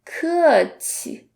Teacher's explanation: So the QI is the neutral tone, so we don't have to put any emphasis on it.